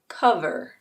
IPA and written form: ˈkʌv.ər (cover)